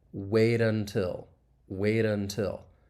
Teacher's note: Again, this is specific to the US accent. That T is going to be a flap T. It's going to sound like a soft D. So it this occurs when it comes between two vowel sounds. · You can hear me say that flap T, which I can then link to that vowel sound in until.